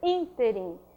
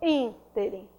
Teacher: a sílaba tônica dela é a antepenúltima sílaba